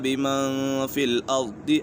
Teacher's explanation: اشر ارید بمن فی الارض، یہاں پر اخفاء کا قاعدہ لگ رہا ہے کیونکہ نون ساکن کے بعد فا حرف اخفاء میں سے ہے تو یہاں غنہ ہوگا